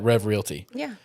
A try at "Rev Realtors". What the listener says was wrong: Rev Realtors. You said Rev Realty.